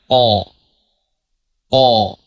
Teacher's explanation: Huruf qof itu kalau dibaca fathah tebal.